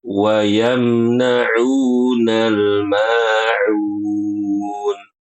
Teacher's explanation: Fokus di huruf ainnya ibu-ibu, jangan diganti dengan hamzah, ya.